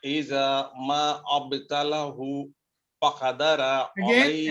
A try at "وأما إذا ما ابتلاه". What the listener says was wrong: again this alif and this alif are not pronounced. We move directly together from the meme to the ba. وأما إذا ما ابتلاه